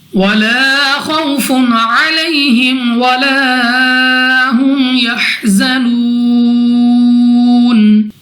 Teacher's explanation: خو مستعلیہ میں سے ہے، موٹا پڑھیں گے منہ اور آواز کو کھول کر۔ واو ساکن سے پہلے زبر واو لین بغیر کھینچے بغیر جھٹکا دیا پڑھیں گے۔ فا کے اوپر 2 پیش، تو 2 پیش کی تنوین کے بعد ہمارے پاس عین حروف حلقی میں سے ہے، اظہار کا قاعدہ ہے بغیر غنہ کے پڑھا جائے گا۔ · یہاں پہ ہمارے پاس الف سے پہلے زبر الف مدہ 2 سیکنڈ تک کھینچ کر پڑھنا ہوگا۔ خو مستعلیہ میں سے ہے، موٹا پڑھیں گے منہ اور آواز کو کھول کر۔ واو ساکن سے پہلے زبر واو لین بغیر کھینچے بغیر جھٹکا دیا پڑھیں گے۔